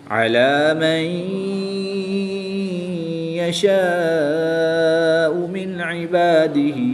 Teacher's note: پہلا حرف متحرک، دوسرا حرف ساکن اور تیسرا حرف مشدد ہو تو متحرک حرف کو مشدد حرف کے ساتھ ملاتے ہیں اور ساکن حرف کو مشدد حرف میں مدغم یعنی شامل کر کے پڑھتے ہیں۔ اور یہاں پر نون ساکن کے بعد یا حروف یرملون میں سے ہے تو یہاں پر ادغام مع الغنہ ہوگا، غنہ بھی کریں گے